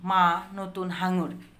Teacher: যে ব্যঞ্জনধ্বনিগুলো উচ্চারণের সময় ফুসফুস থেকে বাতাস নাক ও মুখ দিয়ে বেরিয়ে যায় সেগুলো হচ্ছে নাসিক্য ব্যঞ্জন। ফুসফুস তাড়িত বাতাস নাক ও মুখ দিয়ে বাধা পেয়ে বের হয়ে আসে, তখন সেটা হচ্ছে নাসিক্য ব্যঞ্জন।